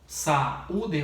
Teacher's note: O hiato, gente, é quando eu junto uma vogal com outra vogal, como é no caso de saúde, o que é o hiato, dois sons separados onde eu consigo identificar cada um